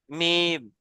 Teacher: দু ঠোঁটের শুকন অংশ মিলিত হয়ে উচ্চারিত হয় মিম